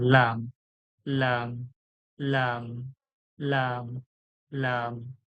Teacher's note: জিভের আগাটা সামনের যে দাঁতের গোড়া রয়েছে সেই গোড়ার কাছ থেকে লেগে উচ্চারণ হয়